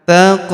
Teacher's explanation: Huruf qof berharakat sukun kita pantulkan atau kita qalqahkan